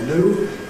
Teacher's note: After [n], ‘new’ [njuː]. Americans tend to drop the [j] and say ‘new’ [nuː]